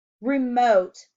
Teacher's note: Remote has a long O sound in the second syllable.